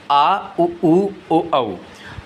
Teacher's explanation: जिन स्वरों के उच्चारण में जीभ का पश्च भाग काम करता है पश्च स्वर कहलाते हैं। पश्च स्वर की संख्या 5 होती है, आ उ ऊ ओ औ। · पश्च स्वर जिन स्वरों के उच्चारण में जीभ का पश्च भाग काम करता है।